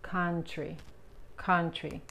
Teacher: Aquí la OU se pronuncia como la A en español, pero más relajada.